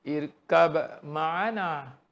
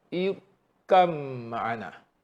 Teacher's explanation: Mim disyadahkan. Masuk terus ke mim. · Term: idgham